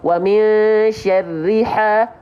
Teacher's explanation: H kecil keluar dari tengah tenggorokan